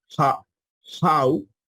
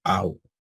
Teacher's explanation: El dictongo alfa y upsilon, igual, podemos decirlo rudo, ha, how, o podemos decirlo suave, au.